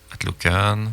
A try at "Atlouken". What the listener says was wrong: Il faut prononcer. Il n'y a pas de A entre le T et le L. Atlouken. Enlever le A, oui. Atlouken.